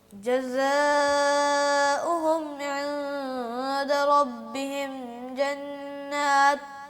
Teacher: زا جو ہے اس کو پہلے سیٹی کی آواز پیدا کریں